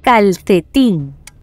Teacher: Calcetín es una palabra aguda, ya que su sílaba tónica está en la última posición.